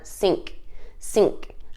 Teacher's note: I kind of like cut off that k sound at the end